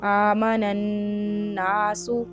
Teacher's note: नून का नून में इदगाम हो रहा है, ऊपर तशदीद भी है, तो इदगाम करेंगे यहाँ पर, यानी नाक में आवाज लेके जाए।